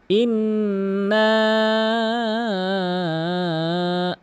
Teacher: নাকের ভিতরে নিয়ে আওয়াজ করা, এটি হচ্ছে ওয়াজিব গুণনা, আবশ্যক গুণনা। এবং না, যে আমি একটু টেনে বলবো, ৩ আলিফ টেনে বলবো, এটির কারণ হচ্ছে উপরের ঢেউ চিহ্ন।